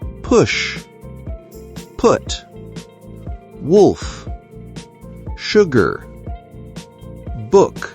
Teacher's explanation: This sound is short and rounded. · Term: Short oo